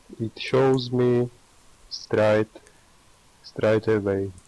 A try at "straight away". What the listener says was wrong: Sounded a bit Australian. Straight. So straight, like 8. Okay, it rhymes with 8. Try it again.